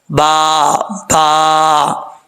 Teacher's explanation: اوپر والا ہونٹ اور نیچے والے ہونٹ کی، وہ جگہ آپس میں ملائیں گے، ٹکرائے گی تو با پڑھا جائے گا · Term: با کا مخرج